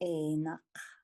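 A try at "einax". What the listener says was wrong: This is where we want to start distinguishing. It's not a K sound. So in a K, you hear an actual touch between your tongue and the top of your mouth. K.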